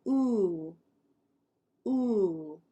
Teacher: just said the one before this is more like oh uh but ooh ooh like shoe it's rounded